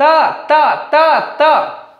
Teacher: ये हमारी जो जीभ है उसको दांत को स्पर्श कर रही है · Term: दंत व्यंजन